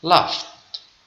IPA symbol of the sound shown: t